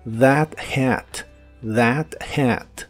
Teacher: Y usaremos las palabras that hat, que significan ese sombrero. La TH de that es la versión que suena como una D vibrante.